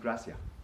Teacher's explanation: here in Puerto Rico we are said to eat the last letter · you might hear a little Lisp at the end for the S but you really won't hear the S here in Puerto Rico · in Puerto Rico, we are said to eat the last letter. We eat the S on gracias. So in Puerto Rico, gracias is really pronounced gracia.